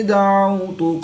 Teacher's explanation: واو ساکن سے پہلے عین پر زبر ہے تو واو لین اس کو لمبا نہیں کریں گے